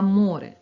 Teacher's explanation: перший звук м твердий приголосний о голосний наступний звук р твердий приголосний е голосний